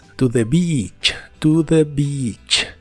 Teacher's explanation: la palabra Beach siempre se pronuncia con una I larga y doble que suena muy clara Beach no la pronuncies con la i corta porque es otra